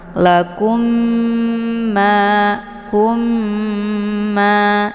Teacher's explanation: Cara bacanya mimnya didengungkan, ditekan kemudian ditahan lebih kurang 2 harokat sehingga terbentuk suara yang mendengung sambil dileburkan ke dalam huruf ma. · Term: idgham mimi